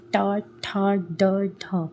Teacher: मूर्धन्य मतलब जिसमें आपकी जीभ थोड़ी मुड़ती है, जैसे ट, ठ, ड, ठ, तो इसमें आपकी जीभ थोड़ी सी मुड़ती है, तो ये होता है मूर्धन्य।